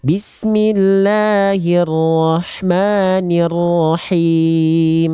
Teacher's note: H kecilnya ya dari tengah-tenggorokan karakteristik nafasnya dia berbisik